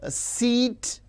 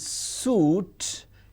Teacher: E is front close unrounded whereas U is back close rounded. · if you pronounce words like seat and suit, it is clearly visible, evident that E, it is front close, and U is back close.